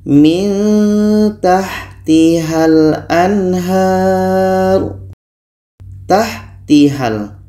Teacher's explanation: huruf Ha ini pada akhirnya dibaca pendek karena bertemu dengan huruf yang tidak diucapkan.